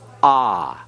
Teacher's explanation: it is a long A, that is the A as in the English word father. It's ah. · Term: Comments